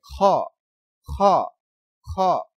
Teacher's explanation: বাংলা খ এর সাথে আকাশ আকার প্রকাশ পাবে না যেমন বাংলা খ উচ্চারণ করি আর এই খ উচ্চারণ হবে একটু ভিতর থেকে